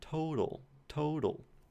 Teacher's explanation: that middle sound, total, total, that's our flap. So in my dialect of English, that is a flap